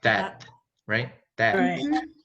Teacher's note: the last t is not actually like a t right it's like it's kind of like muted